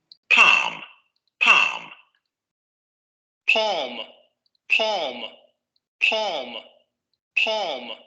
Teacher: tenemos el caso de la aspiración de la primera consonante que no tenemos reflejada en la transcripción